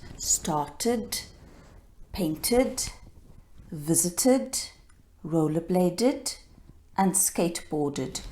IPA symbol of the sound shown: Id